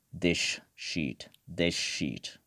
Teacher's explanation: it will become “thish sheet” thish sheet. So, what happens here “s” becomes “sh”